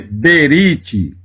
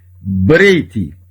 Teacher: quando vem acompanhado aqui com o reish, então não se lê berite, se lê brite, que é aliança, significa aliança. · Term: Shevá mudo